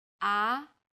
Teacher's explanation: middle pitch then Rises quickly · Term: second tone